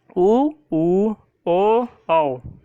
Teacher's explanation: बोलने में जो है हमारा ओठ गोल आकार में, वृत्त आकार में बन रहा है। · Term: वृत्त मुखी स्वर